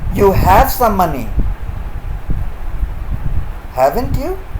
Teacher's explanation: here question tag has been spoken with a rising tone